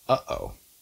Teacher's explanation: has glottal stops and it as well one word is uh-oh that stop in the middle is a glottal stop